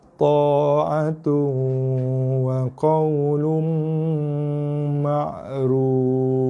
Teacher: Dengung 2 harakat, ditekan pada huruf mim, bibir kena kacip, dengung 2 ke 3 harakat, bunyi dengung kat hidung. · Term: idgham ma'al gunnah kamil